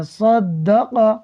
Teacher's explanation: دال حروف قلقلہ میں سے ہے، مشدد ہے، تو جمع کر پڑھیں گے صدق۔ صاد بھی حروف مستعلیہ میں سے ہے، یہ ہمیشہ پر پڑھا جائے گا، تو اس کو سین نہیں پڑھنا، صدق نہیں پڑھنا بلکہ صاد پڑھنا ہے، صدق۔